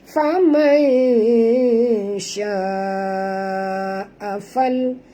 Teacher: Sya'a di sini tuan-tuan panjang 4 hingga 5 harakat, mad wajib mutasil.